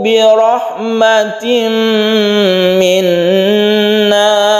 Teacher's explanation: minna ini juga kita dengungkan karena ini adalah gunnah musyaddadah, gunnah karena bertasydid · Birahmatin ini adalah idgham biguna tanwin bertemu dengan mim. Rahmatin rohnya kita tebalkan karena berfathah, disebut tafkhim atau istilah lain adalah mufakham atau mufakhamah.